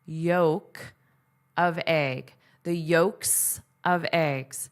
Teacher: There's no L. It's totally silent. So, this means it is a silent letter.